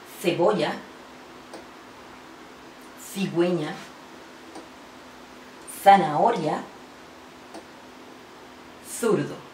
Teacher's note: En la pronunciación de la C y la Z se hace un sonido interdental, es decir, se coloca la lengua entre los dientes